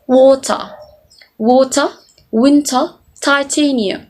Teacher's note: But in British, it was actually pronounced as water, water, winter, titanium. So the T sounds is clearly pronounced, unlike the American English that just simply omitted or just pronounced the T silently.